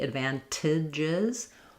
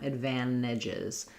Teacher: I'm either going to say that T as a true T, advantages, or some native speakers just leave that T out most of the time, advantages.